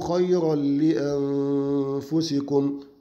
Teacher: اللام حرف من حروف الإدغام ولكنه إدغام بغير غنة